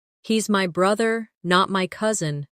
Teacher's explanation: The stress on brother changes the meaning. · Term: contrastive stress